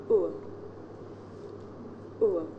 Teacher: The shape the mouth makes changes from the beginning of the sound to the end. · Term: diphthong